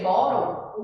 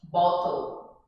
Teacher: Que os americanos, eles pronunciam T com som, vamos dizer assim, de R, tá? Enquanto o britânico continua o mesmo som, que é som de T.